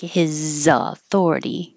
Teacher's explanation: the Z in his will connect to authority and sound like his authority.